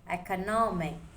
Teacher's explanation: The stress is on no